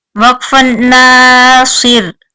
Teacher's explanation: صاد پر پڑا جائے گا اور را باریک